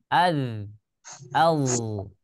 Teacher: dza itu makhrajnya ya berada di ujung lidah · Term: huruf dza